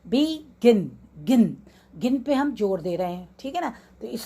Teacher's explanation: और दूसरी जो इंपॉर्टेंट बात हमको देखनी है 2 सिलेबल वाले वर्ड्स में, कि वो लास्ट वाला जो सिलेबल है वो स्ट्रेस होना चाहिए, उस पर जोर आना चाहिए।